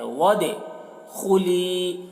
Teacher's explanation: یہاں پر بھی الف کو نہیں پڑھیں گے واو کو دال سے ملائیں گے اور دال میں قلقلہ کریں گے ود خلی خا کو پر